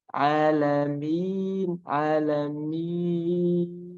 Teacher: Yang pertama ada dari ketika saya pegang agak sedikit terputus suaranya, tapi ketika panjang sudah mulai panjang, nah itu tidak ada lagi suara dari hidung.